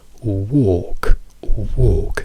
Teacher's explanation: Se invece di O mettiamo O, andiamo da woke a walk, walk, che è la O lunga chiusa